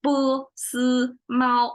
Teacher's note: when we pronounce it, it's 3 flat tones